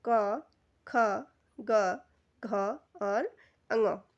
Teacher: क वर्ग का जो उच्चारण होता है उसे कंठ भी कहा जाता है। तो यह हमारे गले से इसका उच्चारण रहता है।